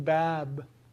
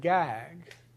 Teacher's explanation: The difference is that for bab, you're making a bilabial stop, and for gag, you're making a velar stop